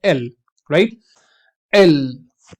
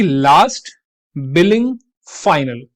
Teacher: The tip of the tongue remains इन contact with the alveolar ridge and the sound is always voiced.